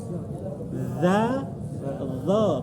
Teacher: Dha makhrajnya sama dengan ketika bilang dha, di mana ujung lidah ketemu ini gigi depan